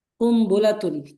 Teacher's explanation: কুমবুলাতুন এখানে নুন হবে না, নুনের জায়গায় কি হবে, মিম হবে। হ্যাঁ, মিম দ্বারা পরিবর্তন করে পড়তে হবে। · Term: ইকলাব